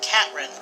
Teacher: he pronounces it Catrin, omitting the TH sound